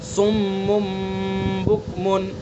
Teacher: صم بکم، میم کے اوپر تنوین ہے اور تنوین کے بعد با ہے، تو تنوین کو میم سے بدل کر غنہ کے ساتھ پڑھیں گے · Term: قلب